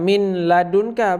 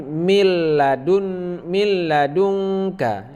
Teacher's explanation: tidak berdengung jadi kita baca seperti tasydid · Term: idgham bilagunnah